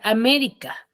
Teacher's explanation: ¿En cuál tiene la mayor fuerza de voz? La me, En la ME. Entonces, es una esdrújula